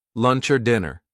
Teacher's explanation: the word or gets reduced, gets shortened, gets linked to a word before or a word after